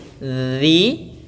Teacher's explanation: Alladzi, hati-hati dalam pelafalan zi, jangan diganti dengan zai karena dia bukan huruf zai, tapi za, ujung lidah kita tempelkan di ujung gigi sari